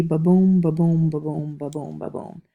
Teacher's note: notice ba is one unstressed syllable boom is a stressed syllable